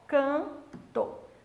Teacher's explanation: Se você acha que esse N está se relacionando com T, não existe encontro consonantal MN mais consoante, tá? Esse N, ele está nasalizando esse A. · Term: dígrafo vocálico